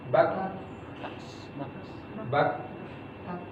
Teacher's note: Ketika terangkat bagian pangkal lidahnya, terangkat naik, bak, tertutup tuh, makhrajnya tertutup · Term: syiddah